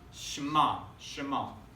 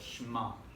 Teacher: So we got Shin, Mem, Ein, Shema. And the Mem and the Shin kind of are blended together a little bit